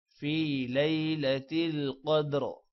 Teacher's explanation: قوف موٹا ہوگا اور دال پر قلقلہ ہے